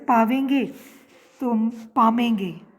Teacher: ब्रज भाषा में व के स्थान पर म का आदेश भी मिलता है, जैसे पावेंगे तो पामेंगे, व क्या बन गया, म।